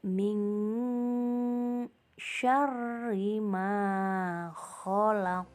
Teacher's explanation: pada lafal min syarri ada nun sukun bertemu dengan huruf shin yang merupakan huruf ikhfa. Maka cara membacanya haruslah disamarkan. Pada ayat 2 ini juga terdapat bacaan qalqalah kubro di akhir ayat pada lafal khalaq. · terdapat bacaan qalqalah kubro di akhir ayat pada lafal khalaq. Maka cara membacanya haruslah dipantulkan.